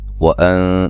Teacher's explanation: نون ساکن کا اخفا ہے باریک